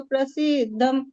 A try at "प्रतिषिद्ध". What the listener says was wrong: बस शब्द क्या है तेन प्रतिषिद्ध प्रसिद्ध आपने शायद पढ़ लिया था